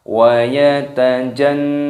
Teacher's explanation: Nun tasydid disini didengungkan